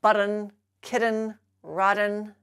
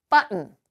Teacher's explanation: avoid pronouncing that Double T as a flapped d instead of the glottal stop